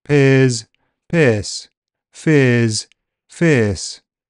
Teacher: as a long vowel sound ear will shorten before a voiceless consonant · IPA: /ɪə/